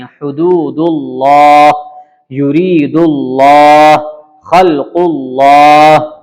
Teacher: لام کو پر کریں گے، موٹا کریں گے